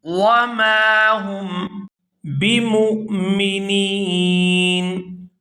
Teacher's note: وقف کی وجہ سے نون جو ہے وہ ساکن ہو جائے گا اور نون ساکن ہونے کی وجہ سے یہاں مد ہوگی تو یہاں اس کو کھینچ کر ادا کریں گے۔